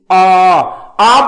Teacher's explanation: ਮੂੰਹ ਭਾਵੇਂ ਖੁੱਲਾ ਰਹਿ ਰਿਹਾ ਪਰ ਜੀਭ ਕਾਫੀ ਥੱਲੇ ਲੱਗ ਚੁੱਕੀ ਹੈ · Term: ਨੀਵੇਂ ਸਵਰ